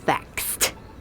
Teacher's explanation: The verb fax ends with a s sound, so we pronounce it faxed with the t. Or like ends with an e, but the last sound is k, so we pronounce it liked. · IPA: /t/